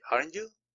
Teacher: En esta parte en la entonación, el aren't suena muy poco. El énfasis en la entonación está en el you. El volumen empieza abajo y termina arriba.